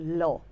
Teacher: ল বললে দুই পাশ দিয়ে হাওয়াটা বের হয়ে যাচ্ছে। সো এটা হচ্ছে ল। · পার্শ্বিক ব্যঞ্জন কাকে বলে, আমরা একটু আগে পড়েছিলাম পার্শ্বিক মানে পাশ দিয়ে হাওয়া বের হয়ে যাবে, এই দুই পাশ দিয়ে ল, ল বললে দুই পাশ দিয়ে হাওয়াটা বের হয়ে যাচ্ছে